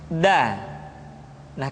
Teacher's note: diucapkan dengan menyentuhkan ujung lidah kita dengan bagian gusi gusi dua ujung dua gigi seri bagian atas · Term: huruf da